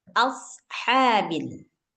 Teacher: ha keluar dari tengah tenggorokan